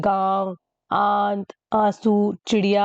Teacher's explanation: अनुनासिक स्वर के उच्चारण करते समय नाक से कम और मुंह से ज्यादा सांस निकलती है।